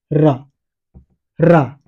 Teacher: जब मैं र का प्रयोग कर रहा हूं, रा, तो जीभ क्या हो रही है, प्रकंपित हो रही है, मतलब जनरेशन जनरेट हो रही है कि नहीं, प्रकंपित हो रही है। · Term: प्रकंपित व्यंजन